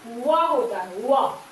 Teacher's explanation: फिर है दंत ओष्ठ्य, दंत ओष्ठ्य दांत के साथ ओष्ठ, दंत ओष्ठ्य, ये आपका व होता है